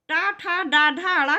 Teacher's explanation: टा, ठा, डा, ढा, अड़ा का उच्चारण स्थान क्या होता है? मूर्धा।